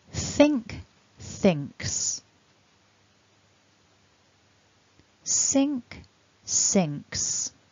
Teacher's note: Now let's look at some examples with a verb that ends in a k sound. So our endings now will be ks when we add that s